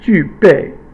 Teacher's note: 具备, 具, fourth tone, 备, fourth tone.